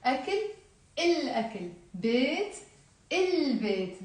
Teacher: all the words in Arabic that start with a moon letter, when we add the alif lam to them, we do pronounce the l.